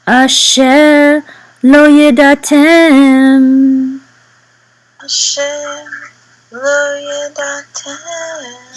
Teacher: So the accent is going to be on the last syllable. Because of this right here, this line, this vertical line, yedatem.